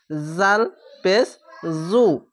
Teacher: হালকা জিহ্বা বের করে পেশ উচ্চারণ করবেন